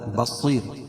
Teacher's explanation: بصیر صاد کو پر پڑھیں گے، اور وقف کی صورت میں را باریک پڑھی جائے گی، کیوں؟ اس لیے کہ قاعدہ ہے کہ رائے ساکنہ سے پہلے یا ساکن ہو تو رائے ساکنہ ہر حال میں باریک پڑھی جاتی ہے۔